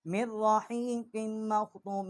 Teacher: میم کو را کے ساتھ مشدد کیا، کاف کو میم کے ساتھ مشدد کیا ، اور یہاں ہم نے غنہ کیا ہے۔ ختامہ مسک وفی